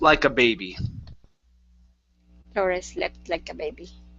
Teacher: Okay, so slept like. So connect the T and the L here.